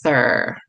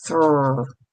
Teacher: when in fact it's not saying thur, it's saying thr